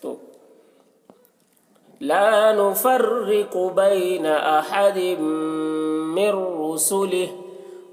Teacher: رسلہ، یہاں پر وقف ہے، قف کے مطلب ٹھہر جانا ہے، یہاں پر تو ٹھہریں گے تو ہا کی جو کھڑی زیر ہے وہ سکون سے بدل جائے گی